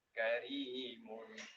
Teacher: ro yang dibaca tarqiq, yang dibaca tipis, ini yaitu apabila ro ini didahului dengan huruf yang berbaris kasroh